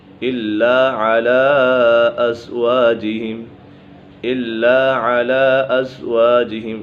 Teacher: الا علی ازواجہم، الا علی ازواجہم، یہاں پر مد منفصل ہوگا، حروف مدہ کے بعد حمزہ دوسرے کلمے میں ہے تو اسی وجہ سے مد منفصل ہوگا، اس کو ڈھائی الف تک کھینچ کر پڑھیں گے